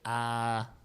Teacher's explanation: is a completely oral ah with the veum completely closed and the opposite is true.